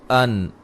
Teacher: جب نون کی آواز ختم ہوتی ہے اس کے بعد پھر دوبارہ نون کی آواز نہیں آتی